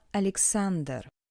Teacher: in the Russian articulation the tip of the tongue strongly adjoin the teeth